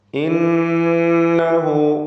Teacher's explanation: ഷദ് നൽകപ്പെട്ട നൂനിനെ 2 ഹറക്കത്തിൻ്റെ അളവിൽ മണിക്കണം. ദ്വമീറിന് മദ്ദുസ്സിലത്തി സുഗ്റ നൽകി ദീർഘം നൽകുക, 2 ഹറക്കത്തിൻ്റെ അളവിൽ മാത്രം. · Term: നൂൻ മുഷദ്ദദ